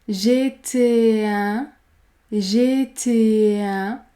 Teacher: Essayez de faire l'enchaînement entre les deux voyelles.